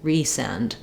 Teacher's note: stressed on the send, but it has secondary stress on the re, because you want to make a difference between send and resend.